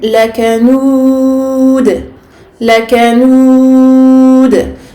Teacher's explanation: je finis mon verset avec un del sakin. Donc je fais une qalqala. La qalqala ici est la qalqala al-kubra.